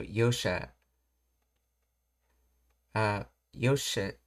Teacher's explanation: The addition of the extra small su, a geminate consonant, and the elongated sound of Yosha serves to intensify the expression, making it sound more enthusiastic, energetic, and celebratory.